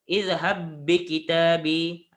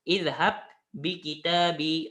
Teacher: Nampak Ustaz sebut satu je ba.